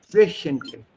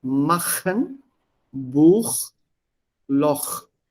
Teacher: Here with umlaut, CH is pronounced as sh. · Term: the sh sound